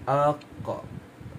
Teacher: semasa menyebut hurufnya, sebahagian besar pangkal lidah terangkat ke langit · Pangkal lidah diangkat dan ditekan ke lelangit lembut, tahap huruf kuat. Lisan mengangkat pangkal lidah dan menekannya ke lelangit lembut, berhampiran anak tekak lebih jauh dari makhraj kaf. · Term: isti'la, huruf qaf